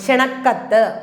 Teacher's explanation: ക്ഷണപത്രികയ്ക്ക് പാ ഒന്ന് മതി, ക്ഷണക്കത്തിന് കാ ഇരട്ടിക്കണം.